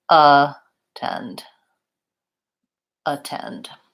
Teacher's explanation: in attend, the AT is unstressed and it has a reduced vowel, schwa. So it really sounds like attend, attend.